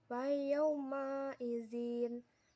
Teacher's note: Pada ayat 25, wa yauma izin terdapat hukum bacaan madlin karena waw sukun didahului huruf ya berharokat fathah dibaca panjang 2 harokat